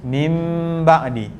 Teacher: Yang ni iqlab tak perlu panjang-panjang sebab dia macam kita sebut huruf mim sahaja. Mim ba'di. Cuma hati-hati, jangan mulut itu kita menekan sampai tak perlu sampai macam tu.